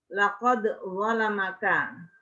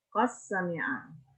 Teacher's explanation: Qad sami'a karena bukan huruf isti'la, tidak tebal